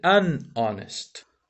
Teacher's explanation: con la h el problema un problema del asunto es que honest en este caso no pronuncia la h como normalmente se hace en inglés